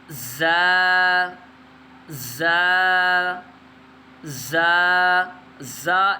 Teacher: اس زا کو ہم نے سختی سے ادا کرنا ہے. اس حرف میں سیٹی بھی پائی جائے گی، تو اس کو ہم نے سختی سے بھی پڑھنا ہے